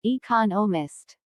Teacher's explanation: economist this content word has new information so it is emphasized there are four syllables in economist with the stress on the second syllable